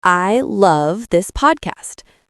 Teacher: the stress is on I. So the meaning is that you love the podcast, maybe someone else does not.